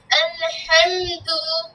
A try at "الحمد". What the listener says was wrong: আলে না, জজম না এটা, এটাকে কি পড়ে তোমাদের ওস্তাদ জি কি পড়িয়েছিল? জজম না, বা অর্থাৎ সাকিন, জজম বা সাকিন। সাকিনের উচ্চারণ সবসময় ধরে রাখবা, ছাড়বে না। আল, আল, আবার যদি এরকম করো আলে, তা তো ছেড়ে দিলা, হলো না। আল হামদু, আল হামদু,